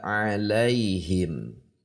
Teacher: Kalau kasrah i tidak e miring.